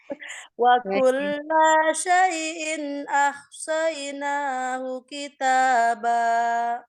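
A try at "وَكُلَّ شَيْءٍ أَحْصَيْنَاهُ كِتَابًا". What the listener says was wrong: Kulla ingat tidak panjang.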